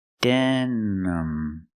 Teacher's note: It's pronounced denim. I use the schwa sound for the second syllable. It's not stressed. Use the sound relaxed sound.